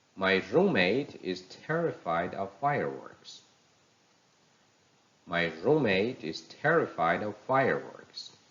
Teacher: the word room in roommate takes the stress fire in fireworks